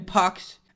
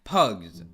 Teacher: the plural suffix s is pronounced s after a voiceless consonant, like in pucks, and the after a voiced consonant or a vowel, like in pugs.